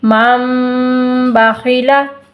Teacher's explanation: نون ساکن کو میم سے بدل دیں گے